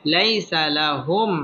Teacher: লাই জবরের বাম পাশে জজম ওয়ালা ইয়া লিনের হরফ তাড়াতাড়ি পড়তে হবে